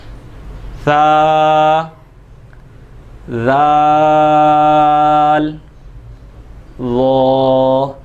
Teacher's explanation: जब हम अपनी ज़ुबान के किनारे को ऊपर वाले दांतों के निचले हिस्से पर, यानी बिल्कुल किनारा जो हमारे दांतों का है उस जगह लगाएंगे, तो आप देखिएगा कि इसके अंदर सीटी नहीं आएगी।